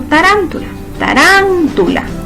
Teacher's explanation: Su sílaba tónica es tarántula, tarán, en ran.